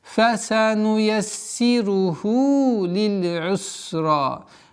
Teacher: Полноценное произношение син с удвоением кесра, удлинение в размере двух огласовок.